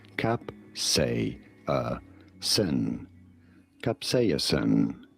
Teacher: You do want to stress on the second syllable, on the say syllable.